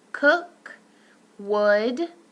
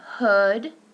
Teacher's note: So only occurs in medial position of words. Lips are not as round as our oo.